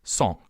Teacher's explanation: you pronounce the vowel as you would any vowel but you pass air through your nose which changes the sound when you pass air through your nose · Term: nasalization